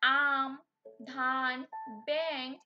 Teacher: যেসব ব্যঞ্জন উচ্চারণের সময় বাতাস কেবল নাক দিয়ে বের হয় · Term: নাসিক্য ব্যঞ্জন